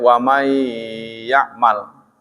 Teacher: kalau wamai ya'mal nun mati berteman ya kan lebur. Waman asalnya waman ya'mal kan bacanya wamai ya'mal.